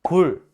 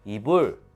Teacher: 불 할 때는 미세하게 공기가 터지는 소리가 더 들릴 거예요 이불 할 때는 그게 덜할 거고요